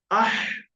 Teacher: একটা হাওয়া বেরিয়ে আসবে গলার মাঝখান থেকে, আহ, আহ। এটা বড় হা।